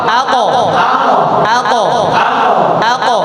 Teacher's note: কফে জজম কলকলা ধাক্কা দিয়ে পড়তে হয়